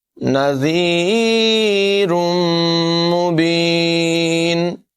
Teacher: ذال جو ہے اس میں سیٹی کی آواز پیدا نہیں کریں گے، نذیر نہیں بولیں گے، نذی سافٹ آواز میں پڑھیں گے۔